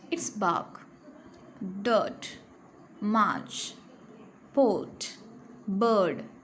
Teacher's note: The R in the middle of the word is silent. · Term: silent letter